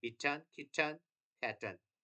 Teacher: most Americans and many British speakers have a glottal stop followed by a syllabic nasal in words like bitten, kitten, and fatten